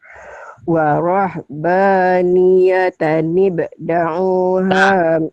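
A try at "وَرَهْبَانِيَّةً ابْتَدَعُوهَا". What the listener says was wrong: Terbalik. Bukan da'u. Tanya ketinggalan. Tada'uha.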